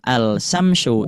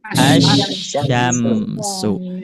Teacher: Karena dimasukkan ke huruf selanjutnya berarti sama di sini yaitu id ilgam. Jadi lamnya tidak dibaca tetapi dimasukkan kepada huruf selanjutnya yaitu huruf syin. Berarti dibacanya bukan alsamsyu tapi asyamsu.